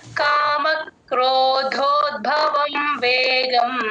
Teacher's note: next ద కి మహాప్రాణం లేదు దాని ద కి పొల్లు పెడతాం అంతే క్రోధోద్భవం భ కి మహాప్రాణం ఉంది గమనించండి